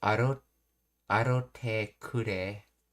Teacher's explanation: they not only didn't do the double T sound, but they changed the ra to a ro